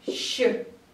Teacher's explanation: shch — это долгий звук sh